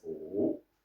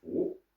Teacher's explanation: Our style is Wu, third tone, and the other is Wu, second tone.